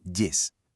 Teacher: Esa diptongación, ese sonido y es un rasgo supertípico del navarro aragonés, no del castellano.